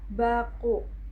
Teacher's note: Saat kita mengucapkan bunyi B pada kata baku, pita suara bergetar dan kita akan merasakan sensasi dengung atau gerakan saat jari kita menyentuh leher.